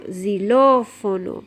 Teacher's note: we have accent on the middle vowel, the second vowel